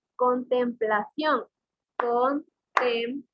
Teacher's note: La mayor fuerza de voz está en la última sílaba y cabe señalar de que es una palabra aguda.